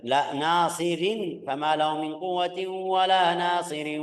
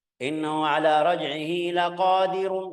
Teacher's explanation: Kalau lanjut atau kalau jika kita lanjut ya kita lihat harakatnya. Nasirin tebis, laqadirun tebal.